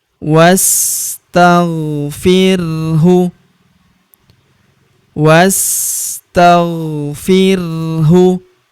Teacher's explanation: huruf wa langsung lompat masuk ke huruf sa yang berharokat sukun. Langsung masuk ke sini.